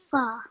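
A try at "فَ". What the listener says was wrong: Very good. Well done. Excellent. That was very good, mashallah.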